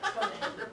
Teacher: Be careful not to extend the vowel on the first half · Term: short vowel